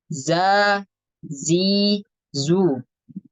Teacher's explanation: ya atau maksudnya agak berhembus gitu berarti dia kurang tepat karena huruf Zai sifatnya itu jahar tidak mengeluarkan nafas